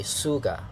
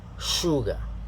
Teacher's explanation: the first part of the word show okay sugar not sugar it's not an s sound but an sh sound